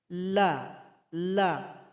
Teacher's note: huruf lam tempat keluarnya ujung lidah tempelkan ke langit-langit kita setelah ditempelkan huruf lam dia punya sifat yaitu nya punya sifat